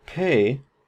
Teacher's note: the P in pay, is aspirated. It has this little H up here that we transcribe it with because we have a puff of air.